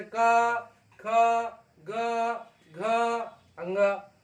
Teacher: कंठ से का, ख, ग, घ, अंगा बोल रहे हैं तो कंठ पर जोर पड़ रहा है, तो ये कंठ व्यंजन